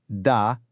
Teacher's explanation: No real puff of air, right?